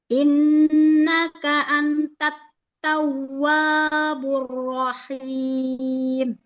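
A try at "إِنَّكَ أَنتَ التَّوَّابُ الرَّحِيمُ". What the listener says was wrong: Untuk baca Al-Qur'annya, terutama di panjang pendek sudah sangat bagus. Hanya nanti PR-nya huruf ain.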